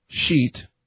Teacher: The voiceless palatal fricative